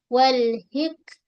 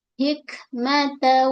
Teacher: ha pedas setengah kerongkong